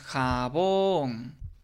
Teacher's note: nos damos cuenta que la sílaba bon, pues es la sílaba tónica, es la sílaba que tiene mayor fuerza